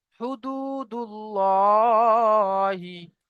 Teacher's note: আল্লাহ শব্দের লামের আগে পেশ এসেছে, তাই আল্লাহ শব্দের লামকে পুর করে পড়তে হবে।